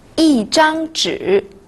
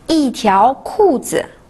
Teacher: Lorsqu'il est suivi d'un premier ton, d'un deuxième ton ou d'un troisième ton, il se lit au quatrième ton